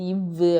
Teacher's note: கீழிதலும் மேல்வாய் பல்லும் இணையறதால பிறக்கக்கூடியது · இப்போ மேலிதழும் கீழிதழும் பொருந்துறதுனால ஏற்படக்கூடியது இப்பு இம்மு. ஆனால் கீழிதழும் மேல்வாய் பல்லும் இணையறதால பிறக்கக்கூடியது இவ்வு அப்படின்னு சொல்லுவாங்க.